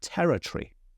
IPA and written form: ˈtɛrətriː (territory)